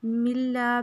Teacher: میم کو لام کے ساتھ ملائیں گے اور لا پہ حروف مدہ الف مدہ ہے اس لیے الف کے برابر کھینچیں گے